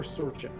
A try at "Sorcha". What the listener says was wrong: Sorka. Yep, because it is very much the Irish dialect, and they do not have a CH. It is just a hard K.